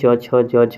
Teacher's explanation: उसके अलावा च वर्ग की अगर हम बात करें, च वर्ग तालु से इस्तेमाल होता है, तालु से। च छ ज, जीभ को हम क्या करते हैं? अपने तालु में सटा करके बोलते हैं